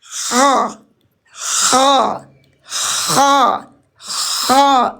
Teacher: Apalagi huruf kha, rokhawah, mengalir lepas, mengalir bebas tanpa ada kha, tidak kha, mengalir lepas. Isti'la, terangkat pangkal lisan, keluar suara meletup. Inpitah, tidak lengket pangkal lisan kita.